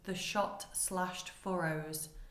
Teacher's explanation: Hughes uses sibilance here to imitate the sound of the gunfire and shells whistling through the skies